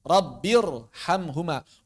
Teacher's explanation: Jadi kalau ada ro sukun sebelumnya Hamzah wasal maka kembali dibaca tebal ke asal.